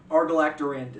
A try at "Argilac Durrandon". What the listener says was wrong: Or you threw an L in there.